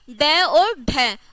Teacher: जिसमें जीभ एक झटके के साथ नीचे गिरती है उसे ही क्या कहा जाता है? उत्क्षिप्त व्यंजन कहा जाता है।